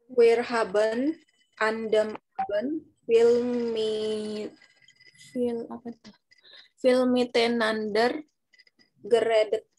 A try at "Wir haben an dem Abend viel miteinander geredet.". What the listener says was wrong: Oke, geredet richtig. Cuma yang salah ini pelafalannya. Dan yang ini bacanya mit ein ander. Ya, mit ein ander. Jadi pelan-pelan aja. Jangan disambung mitain ander, bukan mit ein ander.